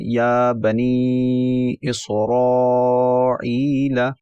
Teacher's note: इसी तरह एक और हर्फ कुरान मजीद में अक्सर आता है या बनी इसराइल, तो उसमें दरमियानी मद भी होती है, छोटी मद भी होती है, बड़ी मद भी होती है, तमाम मदें इकट्ठी हो गई, तो उसको कैसे पढ़ें, या बनी इसराइल। तो यहाँ पर पहले हर्फ के ऊपर छोटी मद है, फिर नी के ऊपर जो है बनी वाली उसमें दरमियानी मद है, और इसरा के ऊपर जो है बड़ी मद